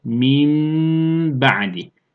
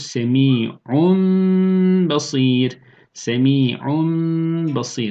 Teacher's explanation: Yani buradaki B harfi duruyor. Sadece ki tenvindeki nun ya da sakin nun harfi mime dönüşmüş oluyor. · tenvin ya da sakin nun harfini tam bir mim harfine çevirmek ve onu ba harfinden önce gunne ile okumaya iklab diyorduk